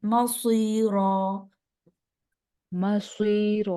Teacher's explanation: स्वाद हरफ मुस्तालिया में से है, मोटा करना है